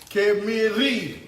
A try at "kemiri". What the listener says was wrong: You gotta roll the R. Kemiri.